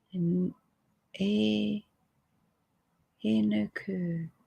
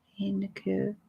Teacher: Accent on first syllable, other two are barely pronounceable.